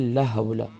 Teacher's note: لام کے بعد الف مدہ ہے، ایک الف کی مقدار کھینچیں گے۔ حول میں ہا گلے کے مڈل سے ادا کریں گے، لام کو شارٹ ساؤنڈ کریں گے۔